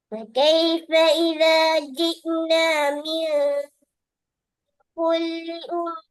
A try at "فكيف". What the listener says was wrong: فكيف فكيف ஃபேட உச்சரிப்பை வெளிப்படுத்தணும்.